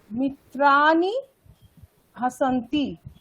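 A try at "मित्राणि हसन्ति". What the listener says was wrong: ঠিক আছে, ভালো।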